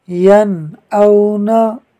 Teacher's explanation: یا نون زبر ین، حمزہ واو زبر او، ین او، نون زبر نا، ین او نا۔ یہاں نون ساکن کے بعد حمزہ حروف حلقی میں سے ہے، لہٰذا اظہار ہوگا، یعنی نون ساکن میں غنہ نہیں ہوگا۔